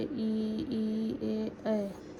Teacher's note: जिन स्वरों के उच्चारण में जीहवा का अग्र भाग ऊपर उठता है अग्र स्वर कहलाते हैं।